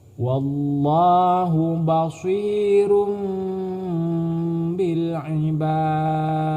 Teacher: Dal apabila ada huruf dal di akhir kalimat ataupun di akhir kata ini cara membacanya harus memantulkan bunyi bacaan. Karena huruf dal ini, huruf dal tersebut ini adalah termasuk huruf qalqalah.